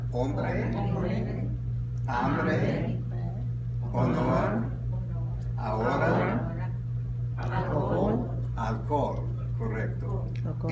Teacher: with the consonant H, it's silent in Spanish.